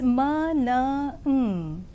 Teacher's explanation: And when we come to the sounds m, n, these are called nasals because the sound which comes out from the lungs enters through the nasal cavity and not through the oral cavity, since the soft palate is lowered, closing the oral cavity.